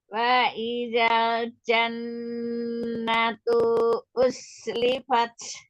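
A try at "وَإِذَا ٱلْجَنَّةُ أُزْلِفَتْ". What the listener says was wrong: Perhatikan tunya tidak dibaca panjang. Jannatu uz gitu yang langsung.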